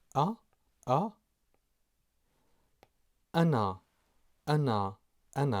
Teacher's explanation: the symbol is called Hamza Hamza and is pronounced as the glottal stop